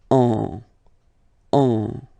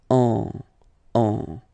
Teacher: Okay, and then if you combine it with the letter N, in that case, you will get what we call a nasal, so it goes in your nose, and then you get the sound on.